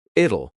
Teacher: when we say the contraction, it will, we kind of add a little u sound before the l. It kind of sounds like u l l it'll So here we have two vowel sounds even though we don't see them.